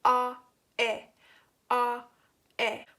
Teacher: What happened is you moved your tongue front and back to make different sounds. You made the A sound when you had your tongue in the back and E sound when it was on front. And you kept your lips in their natural shape, unrounded, and your mouth wide open while making the both sounds.